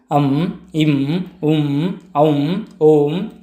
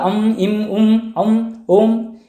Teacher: ಸ್ವರದ ಮುಂದೆ ಅನುಸ್ವಾರ ಬಂದಾಗ ಮಕಾರಕ್ಕೆ ಸಮೀಪವಾದ ಉಚ್ಚಾರ ಏನಾಗುತ್ತೆ ಬರುತ್ತದೆ